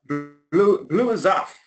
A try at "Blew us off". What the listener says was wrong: I'm hearing a Z. A zoff. I don't want a zoff. A soft.